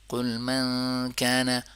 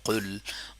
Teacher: قوف زبان کا بالکل جڑ اوپر والے تالو کے ساتھ ٹچ ہوتا ہے تو قوف ادا ہوتا ہے. قل، قل کی جگہ کل پڑھ لیا.